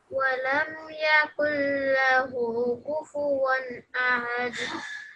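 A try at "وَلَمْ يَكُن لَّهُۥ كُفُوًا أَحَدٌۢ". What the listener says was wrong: This one is inverted dhamma. So this is 2 seconds. And the kalkula, I need to hear that properly. Walam yakul lahu kufuwan ahad.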